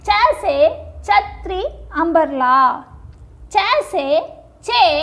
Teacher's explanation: Cha is a hard sound. If you put your hand in front of your mouth, you will feel the breath escaping from the mouth hitting your hand.